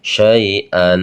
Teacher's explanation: Jadi kalau ada fathatain di akhir ayat dibacanya an, gitu panjang dinamakan mad aywad